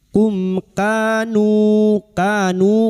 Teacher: Mim sukun bertemu kaf. Izhar syafawi. Mim sukun dibaca jelas tanpa mendengung.